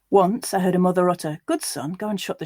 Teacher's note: this time without the uh and oh contrast so just using the uh sound for all of those vowels